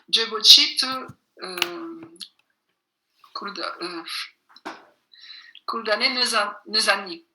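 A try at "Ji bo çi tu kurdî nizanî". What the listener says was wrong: Jebochi te kurdi nezani ou bien te kurmanji nezani. Très bien.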